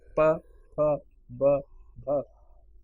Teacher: all the pa sounds are the pavarg sound, the class of pa sounds are articulated at the lips.